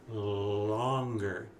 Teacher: instead of making the L stronger what we do is we make it longer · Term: long L